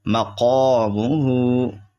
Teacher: یہ قاف جو ہے حروف مستعلیہ میں سے ہے اس لیے موٹا ہوگا